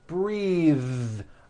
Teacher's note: I am breathing with a voiced th